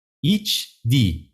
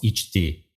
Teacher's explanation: the d sound of the past tense suffix hardens into T sound